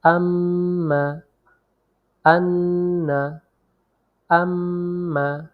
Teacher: মিমকে ধরার পরে আমরা কিছু সময় মিমটাকে ধরে রাখবো এই ধরে রাখার কাইফিয়াতটা ধরে রাখতে গেলেই আমাদের মিমটা নাক দিয়ে উচ্চারিত হবে · নাকের বাঁশি হইতে গুন্নাহ উচ্চারিত হয় অর্থাৎ নাকের মধ্যকের মধ্য থেকে গুন্না উচ্চারিত হয় আমরা এমনটাও বলতে